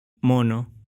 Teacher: Из-за контакта с носовыми согласными испанский гласный тоже может становиться носовым.